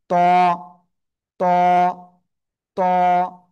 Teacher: জিহ্বার আগা, এই দুই দাঁতের গোড়ায় লাগাবো, লাগিয়ে একটু মোটা আওয়াজে উচ্চারণ করব, একালিফটা নিয়ে।